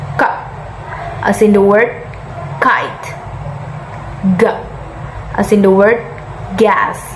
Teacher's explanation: Velar sounds: ka, ga, Velar sounds or consonant sounds are produced when the back of the tongue touches the soft palate or the velum.